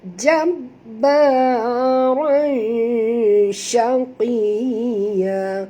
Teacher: sembunyikan bunyi tanwin ini pada kadar separuh ke dalam huruf shim, disertai dengan dengung 2 harakat ikhfa haqiqi, ya.